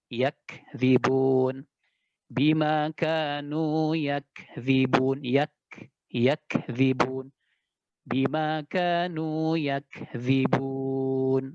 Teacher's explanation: Huruf kaf itu kalau dia sukun maka tampak hamesnya. Ya, hamesnya lebih tampak ketimbang ketika dia berharokat.